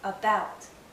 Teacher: In the word about, the stress is on the second syllable, but in the first syllable, we have a a.